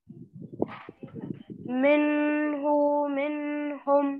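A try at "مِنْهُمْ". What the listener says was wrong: ये देखिए आपको बोले नून की आवाज को जाहिर करना है, बोले नाक में छुपाना नहीं है, साफ जाहिर करके उसको पढ़ना है।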